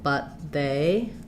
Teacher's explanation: What you might be noticing here is that we don't release that T. I don't say but with a aspirated T. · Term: stop T